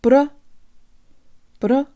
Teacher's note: let's make the a vowel sound more like a schwa